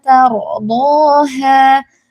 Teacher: ro sukunnya ini tebal ya.